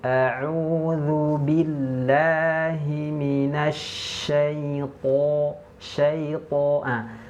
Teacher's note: cara menebalkan huruf to itu dengan mengangkat pangkal lidah ke langit-langit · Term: tafkhim